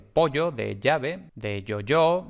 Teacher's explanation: La fricativa palatal sonora, que es la Y